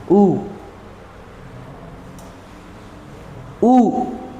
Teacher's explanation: यह होते हैं हमारे संवृत स्वर जिनके उच्चारण में हमारा मुंह कम खुलता है।